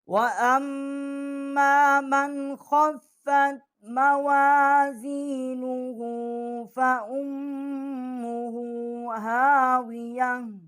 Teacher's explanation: نون کے اوپر جزم ہے، یہاں پر جو ہے ہم اس کو غنہ نہیں کریں گے کیونکہ آگے جو حروف ہے وہ حروف حلقی ہے